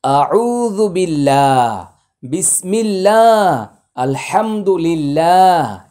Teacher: আল্লাহ শব্দের পূর্বে জের থাকলে আল্লাহ শব্দের লাম এবং আল্লাহ শব্দের উচ্চারণ পাতলা হবে